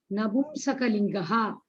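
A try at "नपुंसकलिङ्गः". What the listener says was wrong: Not Shakalinga. One mistake you correct, other mistake you do. Napum Sakalingaha, not Napum Shakalingaha.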